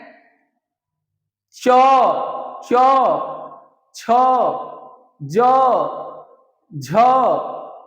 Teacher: तालू को यानी आपके मुख के ऊपरी छत का पिछले भाग पर जीभ टच करती है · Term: तालव्य